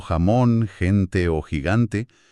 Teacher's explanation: exigen un sonido fuerte que casi raspa en la garganta. Al pronunciar cosas como jamón, gente o gigante, el texto casi lo describe como el acto físico de estar aclarándose la garganta. · Al pronunciar cosas como jamón, gente o gigante, el texto casi lo describe como el acto físico de estar aclarándose la garganta. Es que requiere bastante flujo de aire y tensión ahí atrás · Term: el sonido velar